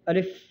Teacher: अलिफ़ का मखरज तमाम मुँह के खाली हिस्सा है